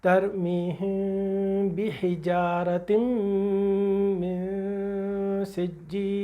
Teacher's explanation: अब हमने इस नून साकिन को अपने होठों में छुपा लेना है, जैसे इख्फा शफवी के लिए छुपाया था, और छुपाने के बाद उसकी आवाज़ को नाक में ले जाएंगे, गुन्ने की एक आवाज़ आएगी और वो गुन्ना कहला देगा इख्फा हकीकी का गुन्ना।